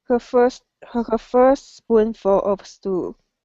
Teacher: So instead of saying first a spoonful, it's first spoonful. Okay, no T sound, only one S sound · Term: T literally disappears